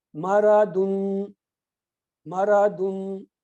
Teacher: اس کا قاعدہ ہے کہ پورا نون کی آواز نکلے گی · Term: پورا اظہار